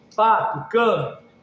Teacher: Rede, dente, pedra, podre. Baixa, elevação do dorso praticamente não existe